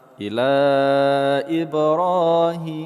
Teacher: Huruf ba sukun pada tengah kata qolqolah sughra kita pantulkan sedikit saja. Ra, kita panjangkan dua harakat. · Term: qalqalah sughra